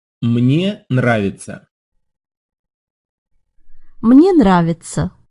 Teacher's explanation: a tough pair of consonants at the start of that second word you have an N and a rolled R that's very hard to say slowly listen again and also note